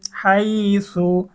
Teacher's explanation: হাইয়া জবর হাই, এখানেও ইজহার হয়েছে, তানবিনের পরে ইজহারের হরফ হা এসেছে, গুন্নাহ ছাড়া স্পষ্ট পড়তে হবে। হাইয়া জবর হাই, সা পেশ সু, হাই সু।